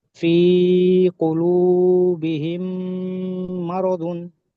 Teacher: মিম সাকিনের পরে মিম এসছে, তাই মিম সাকিনের আওয়াজকে মিমের সঙ্গে মিলিয়ে একালিক পরিমাণ গুণনা করে পড়তে হয়, একে ইদগামের সাফাবি বলে।